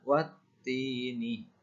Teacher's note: Bunyinya wa langsung dihubungkan ke huruf ta bertasydid, dibaca wattini.